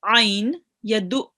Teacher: this is an ayn and it will be read from the middle of your throat